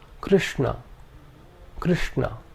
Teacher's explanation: the second is a cerebral sha this is the Sha of Krishna